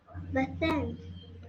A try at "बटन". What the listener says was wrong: Yes, बटन।